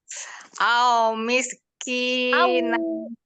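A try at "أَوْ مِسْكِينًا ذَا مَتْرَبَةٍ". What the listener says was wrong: Jangan au. Kinya mad.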